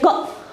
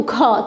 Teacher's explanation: महाप्राण ऐसे व्यंजन को कहेंगे जिनको बोलने में क्या होता है, अधिक समय लगता है, अधिक समय प्रयत्न करना पड़ता है और मुख से क्या होता है, अधिक वायु निकलती है। जैसे कि अगर हमने बोला ख बोला ना हमने ख, तो ज़्यादा समय लगा।